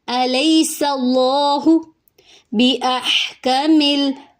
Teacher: اب ہم پڑھیں گے الیس اللہ بِأَحْكَمِ، ہا میں سانس جاری کریں گے، کاف اور میم کی حرکت لمبی نہیں ہوگی